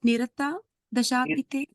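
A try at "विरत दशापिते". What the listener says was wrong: No, Biratha Dashapite. Bha. Just change it to second bha. Biratha Dashapite. Second bha.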